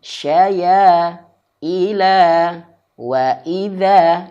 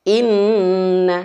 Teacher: Akan tetapi kalau nun bertasydid, dua harokatnya ini jangan sampai disamakan dengan mad tabi'i. Dua harokatnya harus lebih lama. Makanya banyak para ulama yang mengatakan bahwa nun bertasydid, mim bertasydid ataupun idgham bil gunnah, kadarnya gunnahnya masuk kepada gunnah akmal.